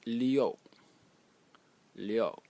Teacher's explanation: It is pronounced liu, liu, in the 4th tone